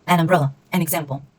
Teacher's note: the N is connected with the letter that is in the next word